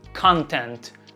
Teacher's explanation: com a tônica na primeira sílaba